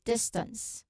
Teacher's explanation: without a strong puff of air after the T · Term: ST consonant cluster